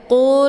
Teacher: ini huruf q letaknya di Pangkal lidah Jadi dibacanya tebal QQ pangkal lidahnya menempel di langit yang lunak